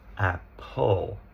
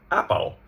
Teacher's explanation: And so therefore, we're not we have a silent e, but it's going to be playing as a schwah in front of the L